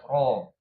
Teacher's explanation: kalau kita tegangkan ro, baru dia tebal ya